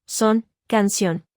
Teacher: se pronuncia cerrando la parte posterior de la lengua contra el velo del paladar